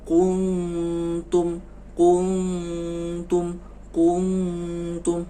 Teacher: Kalau baca kuntum nun sukun bertemu dengan huruf ta, itu ikhfa juga. Dibacanya agak dengungnya lama.